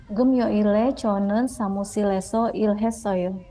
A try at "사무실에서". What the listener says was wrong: Terus bukan samusileso tapi samusireso.